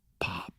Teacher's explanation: Pop is different than the p on the end of Pop the p on the end of Pop has that more plosive element